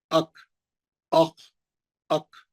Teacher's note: جہاں زبان کی جڑ ہے، وہاں سے خاف نکلتا ہے، اور اس سے ذرہ بازو سے کاف نکلتا ہے.